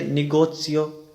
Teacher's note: زیتا اکثر تے اور سین کی آواز ملا کے اپنی آواز دیتا ہے